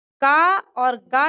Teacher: का और गा जो है ये अल्प प्राण वर्ण है।